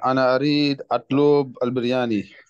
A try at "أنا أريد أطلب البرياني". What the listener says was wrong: You need to say it like a little bit fast. أنا أريد أطلب، أنا أريد أطلب برياني. يا أنا أريد أطلب البرياني.